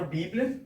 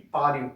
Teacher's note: Um ditongo que a gente chamaria de ditongo crescente. A vogal mais fraca vindo primeiro, depois a mais forte.